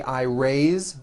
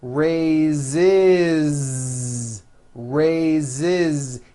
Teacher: even though it is spelled with an S, it's pronounced with a voiced Z.